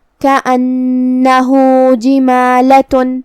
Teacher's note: کلمت جمالۃ میں جیم کے نیچے زیر ہے، لہذا ہمیں زیر کو ظاہر کرنا ہے۔ میم پہ کھڑا زبر ہے تو یہاں مد الف ہوا، ہم اپنی آواز 2 مد کے برابر لمبی کریں گے۔ آخری میں تا پہ تنوین پیش ہے۔